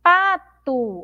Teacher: a palavrinha pato, nós pronunciamos como se tivesse um U aqui no final, mas nós temos uma letra O.